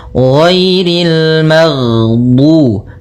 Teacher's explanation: Jahar yaitu tertahannya nafas kita. Jadi ketika melafalkan ghain, nafas kita tertahan, suara kita dialirkan.